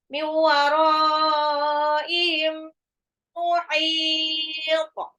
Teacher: Mim sukun ketemu mim, idgham mimi, ditahan dan ya digunnah dan ditahan.